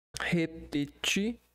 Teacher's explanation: Então, esse repetir, na verdade, não vai ser acentuado, porque é uma oxítona. Repetir, a sílaba mais forte é o ti. terminada em I.